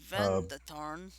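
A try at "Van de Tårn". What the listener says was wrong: A with the circle over it is actually pronounced O.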